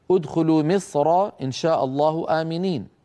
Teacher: الراء مفخمه في مصر لانها مفتوحه